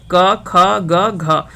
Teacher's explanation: क वर्ग जो होता है वो कंठ से होता है